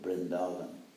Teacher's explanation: of course in east india they pronounce it like a bee in fact in the Bengali alphabet there are no separate letters V and B